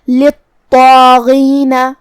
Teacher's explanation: کلمت للطاغین میں یہاں طا پہ تشدید ہے، لہذا 2 حرف کے برابر ہمیں طا کو پڑھنا ہے. طا حروف تفخیم میں سے بھی ہے تو ہم اسے بھاری آواز میں اور منہ پھلا کے پڑھیں گے. جو کہ اس پہ کھڑا زبر ہے تو یہاں مد الف ہوا، ہم اپنی آواز 2 مد کے برابر لمبی کریں گے اور مد الف کو بھی بھاری آواز میں پڑھیں گے. · غین کی ادائیگی حلق کے اوپر والے حصے سے ہے اور غین بھی حروف تفخیم میں سے ہے، لہذا ہمیں طا کو اور مد الف کو اور حرف الغین کو یہ 3 حروف کو بھاری آواز میں پڑھنا ہے.